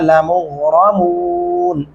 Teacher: लमुग़र गाइन और रा मोटा पढ़ेंगे